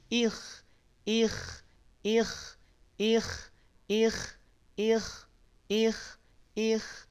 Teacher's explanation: bukan tipis dia ketebalannya yang berkurang namanya tafkhim nisbi